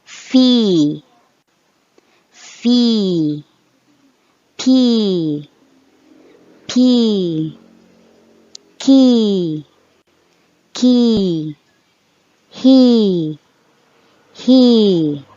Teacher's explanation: this is the long e So when you say it you should prolong the sound at least two seconds